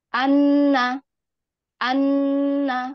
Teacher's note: Nun itu bersifat gunahnya Akmal